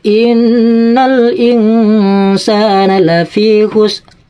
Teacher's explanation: Jadi ro-nya dibaca tapi pelan-pelan ya, sekiranya kedengaran diri sendiri, orang lain gak kedengaran. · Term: ikhfa bi ma'nal jadid